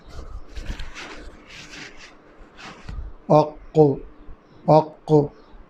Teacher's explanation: یہ قاف وہ ہے 2 نقطے والا جس میں کلکلا ہوتا ہے۔ اق، اق، اور دوسرا آپ کو یہ بھی یاد ہوگا کہ یہ ان 7 حروف میں شامل ہیں جو موٹے پڑھے جاتے ہیں۔